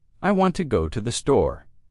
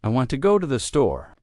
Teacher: The stresses on want and store. The words to and the are much softer. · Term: rhythm of English